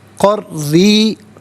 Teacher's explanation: را کے نیچے زیر ہے، را کو باریک کر کے پڑھا جائے گا. ناظرین یاد رکھیں کہ جب مشدد ہوتا ہے نا کوئی حرف تو اسے 2 مرتبہ پڑھتے ہیں.